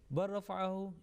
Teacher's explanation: Now, in the bottom you can see here the same word bal is there followed by kaf, and here lam is manifested, clearly pronounced. Bal, the lam followed by ra, lam is dropped.